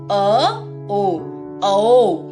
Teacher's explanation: अ और ओ को जब आप एक साथ बोलते हैं तब औ का उच्चारण मिलेगा